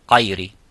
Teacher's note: we have some regions in the southeast where they change the ghain into qaf